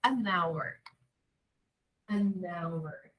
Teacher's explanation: Porque esse H aqui é silencioso. Eu não pronuncio ele. Então, não tem som consonantal.